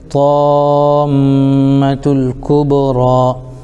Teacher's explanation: کھڑا زبر برابر ہوتا ہے الف مدہ کہ ان کو تھوڑا کھینچ کر پڑھیں